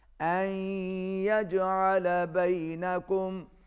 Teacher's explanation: جیم پر قلقلہ ہوگا کیونکہ جیم حروف قلقلہ میں سے ہے · عسى الله أن يجعل بينكم، ان یجعل، یہاں پر بھی ادغام ہو رہا ہے، ملایا جا رہا ہے، مگر ادغام مع الغنہ ہے، آواز ناک میں جائے گی